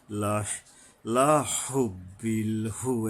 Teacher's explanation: লম্বা হা উচ্চারণে সাবধান, গলায় কিছুটা শোষ শব্দ আসবে